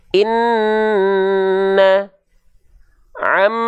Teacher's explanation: kalau Nun dan mim bertasydid Inna tuh dua harakat ditahan atau mim bertasdid misalnya Amma Nah itu baru Dita baru ditahan